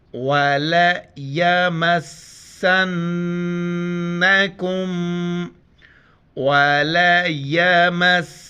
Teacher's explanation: نون کی طرح میم جہاں بھی قرآن مجید میں آئے وہاں پر اس کے اوپر شد ہوں وہاں پر غنہ کریں گے. یہاں پر اس میم اور نون دونوں آ رہے ہیں تو دونوں پر غنہ کریں گے